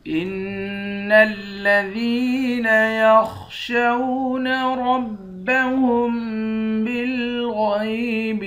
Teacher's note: ان الذین، حمزے کو نون مشدد کے ساتھ ملا کر نون پر غنہ کریں گے، ذال کو یا کے ساتھ ملا کر ایک الف کی مقدار کھینچیں گے، خا کو موٹا پڑیں گے، شین کو واو کے ساتھ ملا کر واو پر ہولڈ بول کریں گے۔